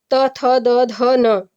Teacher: श्रुत्यानुप्रास इसलिए होगा क्योंकि यहाँ पे दंत्य वर्णों की आवृत्ति हो रही है, बार बार दंत्य वर्ण आ रहे हैं। त थ द ध न, ये जो है वो दंत्य वर्ण होते हैं, इसलिए यहाँ पे श्रुत्यानुप्रास है।